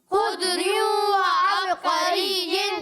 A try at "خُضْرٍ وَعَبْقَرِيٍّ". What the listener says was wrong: اچھا یہاں پر کلکلا نہیں ہوگا, ٹھیک ہے, خضر نہیں, ٹھیک ہے, خضر وعبقري